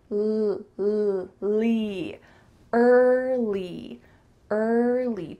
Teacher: make sure that when you say the L your tongue is touching the back of your teeth Li early early don't add another sound in there I often